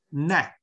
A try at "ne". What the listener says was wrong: 哎 ， 嘴 要 张 大 点 ， 你 发 的 是 这 个 ， 哎 ， 对 ， 要 再 张 大 。